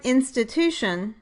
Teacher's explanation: For example, in the word institution, the pattern is strong, weak, strong, weak. The third syllable, to, is the strongest syllable and gets primary stress, but the first syllable, in, is stronger than the second and fourth syllables. So the third syllable has primary stress, the first syllable has secondary stress, and the second and the fourth syllables are unstressed.